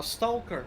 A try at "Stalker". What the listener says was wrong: the L is silent in that word in English. Weird, I know. Stalker, yeah. Stalker, yeah.